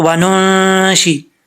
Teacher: امثالکم وننشئکم، واؤ کو پڑھتے وقت ہونٹ گول کریں گے، آگے نون کے بعد جو ہے وہ نون ہے، یہاں پہ 1 الف کی مقدار غنہ کیا جائے گا کیونکہ نون ساکن کے بعد حروف اخفا میں سے شین آ رہا ہے